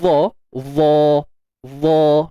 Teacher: Kita sebut itbaq, iaitu terangkatnya sebahagian besar lidah.